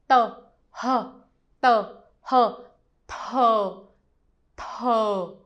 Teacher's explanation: You try to make the t sound, but you breathe out with the H.